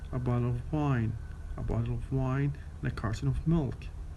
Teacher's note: the stress pattern of weak, strong, weak, weak, strong